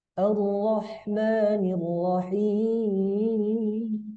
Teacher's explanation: Ayat yang ketiga kita gunakan nada datar, kemudian di ujungnya itu kita tambahin ayunan ya. Ayunan atau variasi.